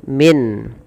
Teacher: jelaskan suara nunnya min. Min tidak boleh ditahan. Dan di sini kita hukumi dengan izhar halqi.